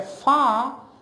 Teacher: pronounce far sound when I say far so my lip lips the lower lip goes up and it touches the upper teeth